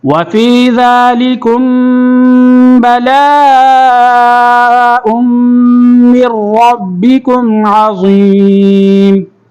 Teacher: کم پہ میم ساکن کے بعد با آ رہا تو یہاں پر غنہ ہوگا